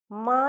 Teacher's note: മ എന്ന് പറയുമ്പോൾ ഉൾചുണ്ടുകൾ തമ്മിലാണ് കൂട്ടിമുട്ടുന്നത്